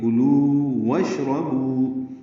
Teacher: واو مدہ کا آگے آنے والے واو سے ادغام نہیں ہوتا ، واشربو واو کو شین سے ملا دیں گے، یہ اصل